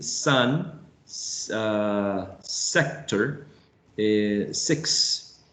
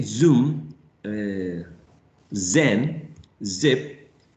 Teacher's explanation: the tip of the tongue is raised towards the alveolar ridge, but it's not actually touching, leaving some small room for the sound, the airflow to escape